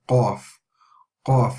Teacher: And again, if you see, this is a heavy letter. However, we don't raise the front part of the tongue, we just raise the back part of the tongue